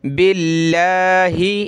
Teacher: لفظ اللہ سے پہلے با پہ زیر ہے تو لفظ اللہ کو پتلا کریں گے